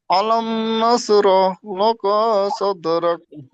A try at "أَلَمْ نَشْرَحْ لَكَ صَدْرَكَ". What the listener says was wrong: লাকা টান হয়ে যাচ্ছে।